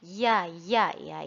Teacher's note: Di sini ada huruf ya keluar dari tengah lidah.